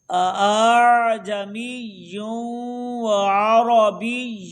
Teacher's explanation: یعنی دوسرے حمزہ کو نرمی کے ساتھ پڑھنے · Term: تصحیح